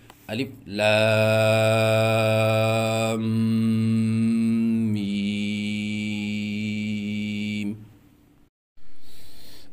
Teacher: اور بعض بچے الف لام میم میں غنہ نہیں کرتے، اور اس کا طریقہ یہ ہے کہ لام پڑھنے کے بعد آواز ناک میں لے کے جائیں ایک الف کے برابر، اور اس کے بعد میم پڑھیں، جیسے الف لام میم۔